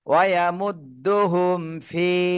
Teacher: তো এখানে মিম সাকিনের পরে ফা রয়েছে, বা আর মিম এই দুইটার কোনোটাই নেই, তাহলে আমরা এই মিম সাকিনে স্পষ্ট করে পড়বো, গুণনা করব না।